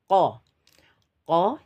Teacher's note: jangan terlalu pendek jangan juga terlalu dipanjangkan cukup satu harakat atau satu kotukan baik eh kita masuk pada latihan dan Mohon